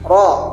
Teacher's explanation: bunyi ujung lidah bergetar sedang bersuara tipis